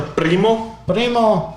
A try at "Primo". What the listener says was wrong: Roll that R. Roll that R.